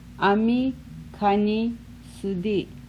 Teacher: Rising, rising, or high, high.